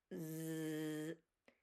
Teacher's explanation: place your hand on your throat. You feel the vibration. That's a voice sound